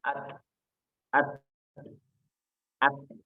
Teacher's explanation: Jadi untuk pembacaan huruf ta sukun, maka dia itu ada sedikit mengeluarkan udara. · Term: hamas